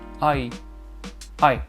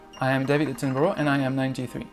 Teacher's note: Cette diphtongue qui shift en fait, en anglais on dit qui shift, qui glisse du A vers le I.